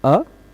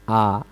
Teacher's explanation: अ बोलने में कम मुह खुलता है आ बोलने में थोड़ा सा ज्यादा खुल जाता है